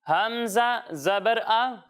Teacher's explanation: جب ہم حمزہ کی ادائیگی کریں گے تو اسے حلق کے نیچے والے حصے سے پڑھیں گے